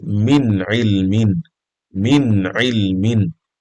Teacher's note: As you can see, the nun is pronounced clearly, عين is pronounced clearly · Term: إظهار